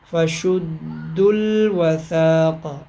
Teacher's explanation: دال کو ڈائریکٹ لام کے ساتھ ملائیں گے ، دال لام پیش دل، فشد الوثاق، یہ یہاں پہ اب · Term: ملانا